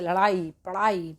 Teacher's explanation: ड और ड बोलते समय जीभ द्वारा यह बाहर फेंके जाते हैं क्योंकि इन्हें उत्क्षिप्त यानी कि फेंके गए वर्ण कहा जाता है।